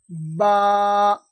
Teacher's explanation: বায়ের মাখরাজ হচ্ছে দুই ঠোঁটের শুকনো অংশ হইতে উচ্চারণ হয়। দুই ঠোঁটের শুকনো অংশ, এই দুই ঠোঁটের শুকনো অংশ।